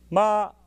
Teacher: that sound begins begins with an attack an IUS Ma and ends in a descending Glide that's the way we speak